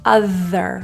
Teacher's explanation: other the main issue here will be th for most people feeling your tongue coming out and vibrating